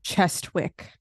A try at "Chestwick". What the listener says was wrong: That's not how it's pronounced. Chezzik. The W's silent.